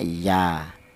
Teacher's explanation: Huruf alif ini gunanya untuk memanjangkan huruf ya ini. Kalau huruf ya ini tanpa ada alif dibaca biasa, dibaca pendek, yaitu 1 harokat ya. Itu cara bacanya iya.